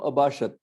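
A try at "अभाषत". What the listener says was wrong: Abhashata. So in the Atmanepadi Lang Lakara forms, you don't have the halanta. Whereas in the Parasmaipadi, you will have.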